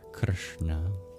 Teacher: Keeping your tongue rolled back, then you produce a sibilant sound in Krishna. So it's not the same SH sound in English, where we just arch our tongue up to the palate. We curl our tongue back. Krishna. And then same with the N sound.